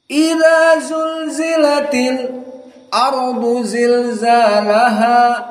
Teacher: antara lam dengan hamzah hanya dua harakat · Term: sak